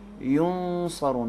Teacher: نون کو ادا کرتے ہوئے صاد کے مخرج میں چھپائیں گے، اخفا کریں گے، مخفی کریں گے، چھپائیں گے.